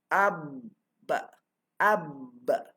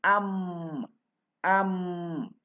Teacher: Mim dengan ba bersamaan pada makhraj, iaitu antara dua bibir. Mim dengan nun ataupun tanwin bersamaan pada segala sifat, iaitu jahar, tawassut, istifal, infitah, izlaq dan gunnah. · mim dan ba ni kan huruf dua bibir yang dirapatkan